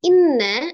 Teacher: Digunnahkan dulu, ditekan. Kemudian ditahan 2-3 harakat, dimasukkan ke rongga hidungnya, suaranya al-khaisum. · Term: nun musaddadah